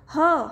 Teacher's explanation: जब इसका उच्चारण किया जा रहा है यानी कि ह हम जैसे ही बोल रहे हैं हमारी जो स्वर तंत्र वो क्या हो रही है झंकृत हो जा रही है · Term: स्वर तंत्री वर्ण